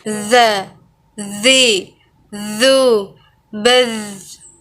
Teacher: Diucapkan dengan mengalir suara tanpa diiringi dengan mengalirnya udara. Sifat lain pada huruf za ini karakter khasnya mirip dengan suara dengungan tawon.